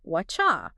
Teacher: U often reduces to ya, but when ya follows a T sound, the T and the Y sounds can blend together to make a chi sound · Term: assimilation